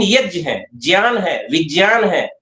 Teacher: तो गा और या नहीं है, जा और या है।